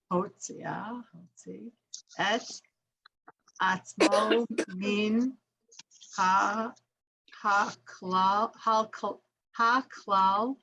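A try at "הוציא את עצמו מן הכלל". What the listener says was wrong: Good.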